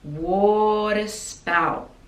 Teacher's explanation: So water we pronounce with like a D sound and a schwa